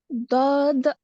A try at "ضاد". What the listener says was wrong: هنا الدال، ركزي على الدال كأنه مخلوط وداخلة معه حرف التاء. الدال يجب أن يكون واضح.